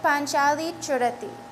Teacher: It has like a slight extra pause. That gives a hint that there's a extra cha there.